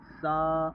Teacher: زبان کا سرا اوپر کے دانت کے اندر کے حصے یعنی اندرونی کنارے پر لگے گا، سا، ورنہ اس کی آواز اس سین کی طرح سا ہو جائے گی۔